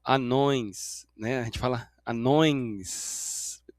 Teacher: Então, bem suave você escuta um som de i aqui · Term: semivogal